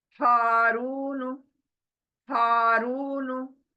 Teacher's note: हा सीने में से निकलना है। · हा खींच रहे हैं अलिफ मद्दा की वजह से, रू खींच रहे हैं वाव मद्दा की वजह से, और नू को ब्रेक दे रहे हैं। खींचना नहीं है नू को।